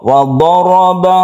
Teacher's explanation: roknya dibaca tebal karena dia itu berfathah